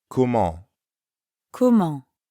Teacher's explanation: Comment ends in the nasal sound en. To pronounce that sound, first say ah while dropping your jaw a bit.